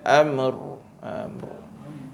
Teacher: di hujung dia ada sifat takrir dipanggil Getaran